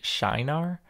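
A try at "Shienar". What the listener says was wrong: I actually looked up the pronunciation of this one. Shanar. And the shy, you said, that's correct, but the emphasis is on the second syllable. So, Shanar.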